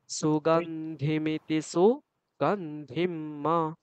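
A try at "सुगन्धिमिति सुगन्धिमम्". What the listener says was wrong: আরো স্পেস রাখতে হবে, সু আর গন্ধিম এই দুটোর মধ্যে, বলুন আবার।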